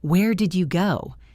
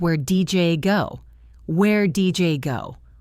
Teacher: In fast speech, the diy and you blend together. It sounds like where DJ go.